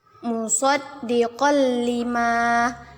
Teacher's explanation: Idgham bila gunnah. Dimasukkan tanpa berdengung.